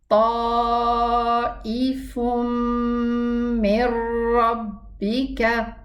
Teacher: In the case of the meme, there's a ghunna, and in the case of the ra, there is no ghunna, but both of them are merging of the noon sukun. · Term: Total merging